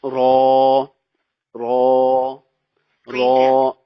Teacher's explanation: زبان کے اگلے والا جو کنارہ ہے سامنے والے 3 دانتوں کا، لیفٹ رائٹ، یہ یہاں سے ادا ہوگا